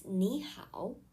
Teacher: when two third tone syllables appear together the first syllable changes to the second tone